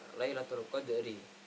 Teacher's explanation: Yang pertama adalah terdapat Lailatul Qadri, terdapat ro yang dibaca tarkik karena berharakat kasar, maka dari itu dibaca tarkik atau tipis